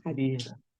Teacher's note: hajar itu roknya tafkhim ya